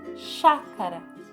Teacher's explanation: A fala fica forte, com mais força, no chá, chácara, certo? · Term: sílaba tônica